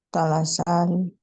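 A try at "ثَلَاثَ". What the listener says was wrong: Salasa. Mana huruf sa-nya? Salasa.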